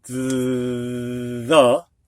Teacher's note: One is voiced. The TH in the is voiced. It's a vibration that you can hear.